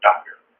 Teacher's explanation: a vowel combined with an r and it basically just ends up as an er sound